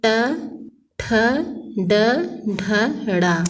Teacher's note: ट वर्ग के अंतर्गत ट, ठ, ड, ढ, ड़ा और इनका उच्चारण स्थान मूर्धा है